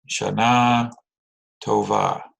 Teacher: put that emphasis on the last syllable there